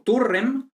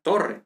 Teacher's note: la U breve se convierte en O